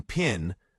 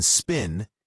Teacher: In pin, the P has a little puff of air, but in spin, it doesn't. They're both still the same P phoneme in English, just pronounced slightly differently. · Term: alophones